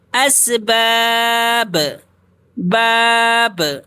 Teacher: جب رکیں گے تو با کی آواز ڈبل نکلے گی، اسی کو قلقلہ کہتے ہیں